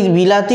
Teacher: জিভকে প্রথমেতে ই মানে উচ্চ স্বরধ্বনিতে যেতে হলো, আ নিম্ন স্বরধ্বনিতে নামতে হলো, আবার ই আবার মানে উচ্চ স্বরধ্বনিতে যেতে হলো। মানে উচ্চ নিম্ন উচ্চ, একবার ওপরেতে উঠে আবার নিচে নেমে আবার ওপরে উঠতে হলো।